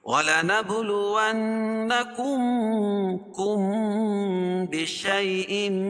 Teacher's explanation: میم ساکن کے بعد با آئے تو اخفاء شفوی ہوتا ہے، یعنی میں اس میں اخفا کر کے پڑھیں گے.